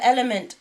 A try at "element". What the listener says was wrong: Don't pronounce that T so aggressively.